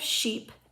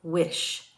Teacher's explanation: There are 2 palatal fricatives, the sh and zh sounds. A palatal sound is produced by pulling the tongue to the hard palate and rounding the lips. Sh is an unvoiced palatal fricative.